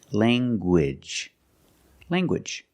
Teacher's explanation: You have the nasal sound, lang, and the hard G.